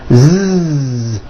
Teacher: So S has no voicing. Z has voicing. Z. So we say the S sound and the Z sound are also paired consonants.